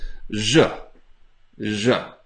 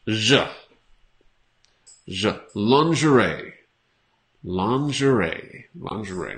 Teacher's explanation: So the G has a Z sound. It's like a very strong SH.